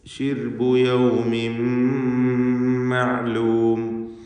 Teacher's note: യൗമിൻ എന്നതിലെ തൻവീനിനെ പൂർണ്ണമായും മീമിലേക്ക് ലയിപ്പിച്ച് ഇദ്ഗാം ബിഗുന്ന കാമിൽ നൽകിക്കൊണ്ട് ഷദ്ദുള്ള മീമിനെ മാത്രം ഉച്ചരിക്കുക.